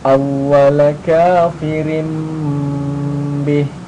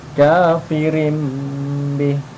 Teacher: Dia dibaca iqlab. Jadi tanwinnya ini kafirim nanti dirubah jadi mim kemudian didengungkan.